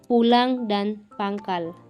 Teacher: huruf N berekor yang bercirikan hidup, nasal, dan velar